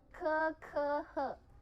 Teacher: yang kekeh suaranya nyaring berasal dari tenggorokan